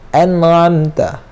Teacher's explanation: huruf nun ni dia tawassut antara syiddah dan rakhawah, antara kita perketatkan dan kita longgarkan. Dia tengah-tengah.